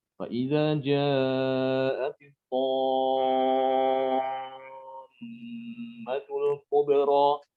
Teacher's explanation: Jadi mat yang tammah itu lebih panjang dibandingkan yang sebelumnya itu ja'a.